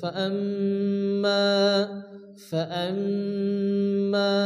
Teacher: এরপরে ফাআম্মা, এখানে মিমের উপরে তাসদীদ, মিম গুন্না ওয়াজিব এবং মিম আলিফ মাদ্দা এক আলিফ মান টান দিয়ে পড়তে হবে।